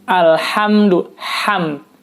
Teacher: Yang betul adalah alhamdu, ham, keluar udara dari mulut.